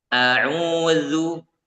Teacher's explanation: dari ujung lidah ya ujung lidah bertemu dengan ujung gigi seri atas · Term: huruf dzal